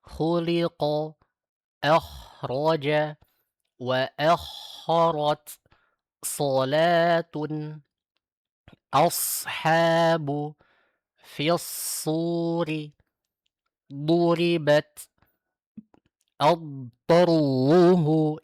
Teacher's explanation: Isti'la itu adalah naiknya atau terangkatnya pangkal lidah kita. Sehingga suara yang dihasilkan menjadi tebal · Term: sifat isti'la